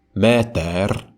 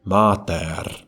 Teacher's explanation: It was mostly the vowels that differed between dialects. The Attic and Doric pronunciations of the word for mother were meter and mater, respectively.